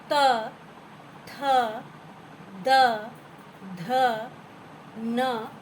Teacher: आगे आ जाते हम त वर्ग में, जहाँ पर त, थ, द, ध, न जो दंत्य से बोले जाते हैं, दांतों से।